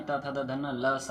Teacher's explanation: स वर्ण का उच्चारण स्थान दंत है